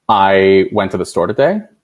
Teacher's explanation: saying a statement with a rising intonation at the end to make it sound like a question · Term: up talk